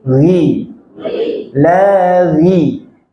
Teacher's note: Ghain kasrah tipis ghi